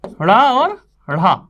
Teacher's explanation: जिन वर्णों को बोलने में जीभ हमारी उछलती है वो उच्छिप्त कहलाते हैं